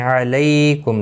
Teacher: علیکم لی یا لین ہے، تھوڑا نرمی کے ساتھ کھینچ کر ادا کریں گے۔ کم میم ساکن کے بعد را آیا ہے، اظہار شفوی ہوگا، یہاں پر اخفا گنہ نہیں ہوگا۔